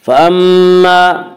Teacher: میم مشدد غنہ ہوگا، غنہ کی مقدار 1 الف ہے